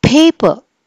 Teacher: అంటే దీన్ని మనము యాస్పిరేట్ చేసి మనం పలుకుతున్నాం, అంటే బోల్డ్ గాలి వదిలి పలుకుతున్నాం